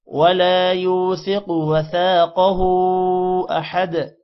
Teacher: ہا پر الٹا پیش ہے اور مد بھی ہے جس کی وجہ سے لمبا کریں گے. احد دال پر قلقلہ کریں گے